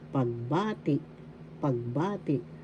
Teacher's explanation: The second syllable has the accent pagbati.